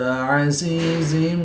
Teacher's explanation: یا ساکن سے پہلے زا کے نیچے زیر تو یا مدہ ایک الف یعنی 2 حرکات کے برابر کھینچ کر پڑھیں گے۔